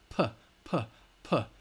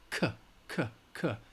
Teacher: those are all voiceless sounds that do not vibrate in your vocal cords